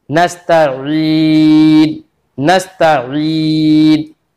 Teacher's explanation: जो ऐन के बाद जो ई की आवाज है वो कहां से? हमारे जबान के ऊपर जो तालु की खाली जगह है उस जगह से वो अदा हो रही है। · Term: या मद्दा